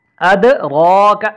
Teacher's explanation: اد دال پہ قلقلہ ہو رہا ہے، را کو ہم موٹا پڑھ رہے ہیں، اور اس کے بعد آنے والی کاف باریک پڑی جائے گی